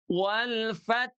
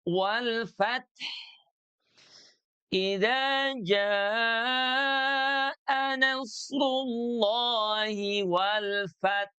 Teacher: sukun 'ha' harus memiliki suara dan napas yang mengalir.